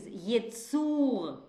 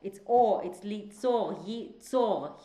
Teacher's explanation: Both in the last syllable. But in one case, it's u, the creature is yitzur, it's u. And in the second, he will create, it's on o